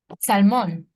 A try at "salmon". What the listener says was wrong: Okay, but it's not salmon, right? In English, it's salmon. No mon, men. Salmon.